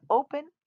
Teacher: we hold our o's out a little longer